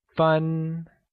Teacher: Minutes translates to fun and is pronounced with a high-level tone.